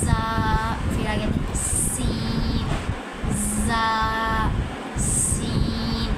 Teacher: سیٹی نکالنی ہے دونوں میں